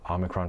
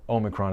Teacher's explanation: ahmicron for the British, for instance, while oh-micron is dominant in New York